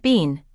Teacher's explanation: in more formal speech or British English, you may hear it pronounced more like been, with a long EE sound. So depending on the accent or speaker, the word can vary, and that's where your listening skills become essential.